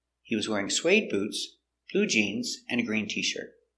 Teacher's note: So the intonation goes down at and a green t-shirt. But it goes up before the commas.